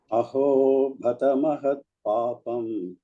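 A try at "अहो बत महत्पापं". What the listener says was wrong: Alpa prana. Aho batamahat papam.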